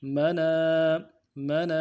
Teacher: نون کے بعد الف مدہ ہے، ایک الف دال میں کھینچیں گے